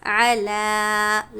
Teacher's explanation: لام پر کھڑا زبر ہے، ایک الف کی مقدار ہم کھینچ کر پڑھیں گے